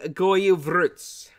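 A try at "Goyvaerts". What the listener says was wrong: Without the S, you know that, right? At the end, the S. No, it's just RT. Goivart.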